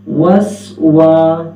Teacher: Number 1 پیش پہ اور نمبر 2 واو پہ. تو واو پہ ہمارے ہونٹ گول ہونے چاہیے